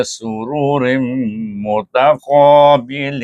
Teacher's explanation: tanwin bertemu dengan min, baca dengan idgham al gunnah dengung dua harakat. Mutaqa dibaca dengan mad asli mutaqa dengan tebal mengangkat pangkal lidah.